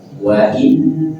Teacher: Ada nun bertasydid, maka tahan 3 harokat.